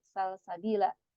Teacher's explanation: lam sukunnya dia ada posisinya di tengah dia tidak diidgomkan tidak jadi Sabila ya tapi Salsabila atau misal lagi maljaa ya